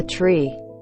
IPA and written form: triː (Tree)